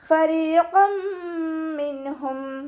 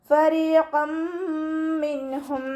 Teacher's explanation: മഖ്റജ് നമ്മുടെ മേലെ മുൻപല്ലിൻ്റെ അറ്റവും താഴെ ചുണ്ടിൻ്റെ ഉൾവശത്ത് നനഞ്ഞ ഭാഗവും ചേർന്നിട്ടാണ് ഫ പുറപ്പെടുന്നത്. സൗണ്ടിന് ലൈറ്റാക്കിയിട്ട് കൊടുക്കുക കേട്ടോ.